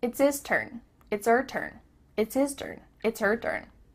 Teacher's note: The H at the beginning of his and her is cut off.